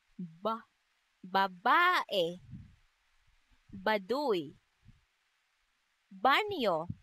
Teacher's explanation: ang letrang B naman ay may tunog na isinasaad rin sa paraan ng pasara at sa punto ng panlabi.